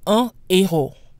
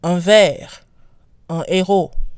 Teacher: Un retains its nasal quality the same way it does when followed by other consonants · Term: aspirated H